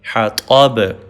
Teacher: با پہ کلکلا یا ایکو ساؤنڈ پروڈیوس کریں گے